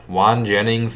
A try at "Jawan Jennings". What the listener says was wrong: Jawan Jennings. It's not Juan, it's Jawan Jennings.